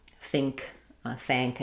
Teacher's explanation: The K sound is going to be made in the same place that the NG sound is made.